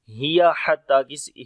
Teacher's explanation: حتی مطلع الفجر، ہیا حتی، ہیا کو لمبا نہیں کریں گے، ہا گلے کے درمیان والے حصے سے آئے گا